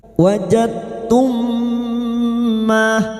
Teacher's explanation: mim sukun bertemu mim idgham mimi, memasukkan atau mentasdidkan 2 mim masuk pada huruf mim berikutnya disertai mendengung selama 3 harokat